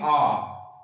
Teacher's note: अगर हम आ को बोलेंगे तो मुंह पूरा खुला रहेगा